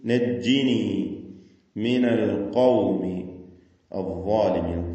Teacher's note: അദ്ദാലിമീൻ എന്ന് പറയുമ്പോൾ ളാഇനും അതിന്റെ അലിഫിനും തഫ്ഖീം കൊടുക്കണം